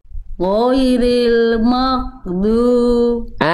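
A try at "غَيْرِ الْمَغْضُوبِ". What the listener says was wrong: Udah bagus jadi ghain, cuman tinggal alirkan suaranya. Ghairil maghdubi. Sedikit lagi, jangan sampai ada nafas keluar. Ghairil maghdubi.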